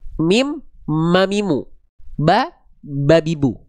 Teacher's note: Mim makhrajnya sama kayak huruf ba. Tempat keluar huruf mim sama kayak huruf ba. Apa? Dari bibir.